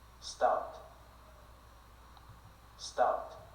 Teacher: Perceba que ele não fala tanto um O, mas também não é tanto um A. Não é O, não é O e também não é um A.